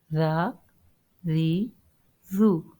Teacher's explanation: zal I have to pronounce with a soft touch, otherwise it can make a whistle sound